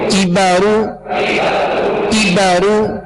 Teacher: کاف کو باریک پڑھنا ہے، یہ ڈنڈی والا کاف ہے، اور را کو پر پڑھنا ہے، را پر پیش ہے.